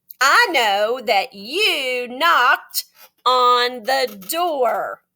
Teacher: So we have a little chant on our paper today, and it says KNKN. You don't say K, you just say N. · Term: silent KN